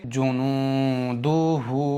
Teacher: पर नहीं खींचना है क्योंकि दाल पर सीधा वाला पेश है। हा को एक अलिफ के बराबर खींचेंगे क्योंकि हा के ऊपर ये उल्टा वाला पेश है। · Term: उल्टा पेश